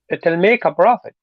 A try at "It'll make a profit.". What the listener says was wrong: Can you go down? Profit. It, it'll make a profit.